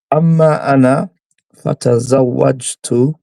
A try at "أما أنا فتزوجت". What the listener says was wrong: أما أنا فتزوجت. it's the tone. You'd be like أما أنا فتزوجت.